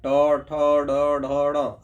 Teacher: जब भी ट, ठ, ड, ढ बोलते हैं तो आपका जीभ जो है सो मुड़ जाता है ऊपर की ओर, और जहाँ जीभ मुड़ करके जिस जगह पे टकराता है उस जगह को मूर्धा कहते हैं। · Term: मूर्धन्य वर्ण